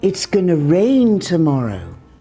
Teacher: When we're speaking fast, we don't say going to, we say gonna.